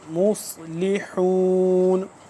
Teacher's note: انما نحن مصلحون، صاد موٹا اور سین کی آواز سے ذرا سا جدا کر کے